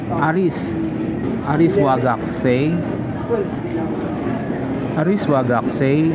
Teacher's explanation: Notice that I have raised my intonation on the last syllable, denoting that I'm trying to convey an interrogative sentence.